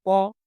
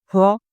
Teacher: প উচ্চারণ করলে মুখ দিয়ে কম বাতাস বের হয় এবং নিচের মাংসবেশিতে কম চাপ পড়ে। আবার এখন মুখ গহবরের গহবরের